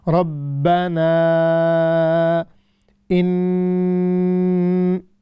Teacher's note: الف مدہ، we need to stretch it up to 6 seconds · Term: مد منفصل